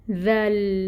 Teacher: دال کو نرمی سے پڑھیں گے اور لام کے ساتھ ملائیں گے